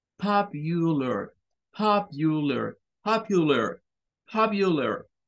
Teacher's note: Esto es para hacerla sonar como cuando decimos you, you, pero no es un sonido como you. Es un sonido más corto porque es el schwa y más suave. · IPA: / ˈpɒp yə lər /